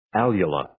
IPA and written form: 'æljələ (Alula)